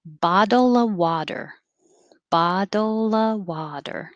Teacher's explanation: if you put an of in there you're not going to hear the v in of